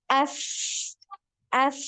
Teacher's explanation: Nah, ini ada aliran ya. Jadi ketika dia sukun ya, huruf sa ini ketika sukun maka ada aliran suaranya lebih panjang ya. As. Jadi sama seperti huruf zal tadi ya, aliran suaranya panjang.